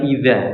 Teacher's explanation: perhatikan idza bukan ida tapi idza, pakainya dzal ya